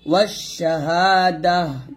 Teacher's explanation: এখানে ওয়াকফ দিলে হবে ওয়াশাহাদাহ, এ তাটা হা হয়ে যাবে, মানে দাল হাজওয়াদাহ এরকম হবে।